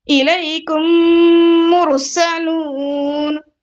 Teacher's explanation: इलैकुम जो मीम साकिन का जो मीम है ना, उसको मैं क्या कर रही हूँ, गिरा दे रही हूँ और मुशद्दद मीम से कंटिन्यू करो · 3 मीम में से 1 मीम को गिरा देंगे और इदगाम करेंगे